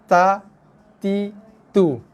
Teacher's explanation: hembusan nafas yang sangat-sangat sedikit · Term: hams